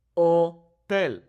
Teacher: Notice how the H is silent here.